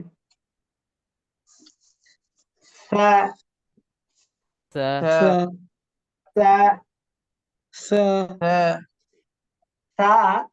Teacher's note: কম টান। জিহ্বার আগা দাঁতের আগা, নরম আওয়াজ কম টান। · সা নরম আওয়াজ হবে, বাতাস বের হবে এবং সিসি আওয়াজটা কম হবে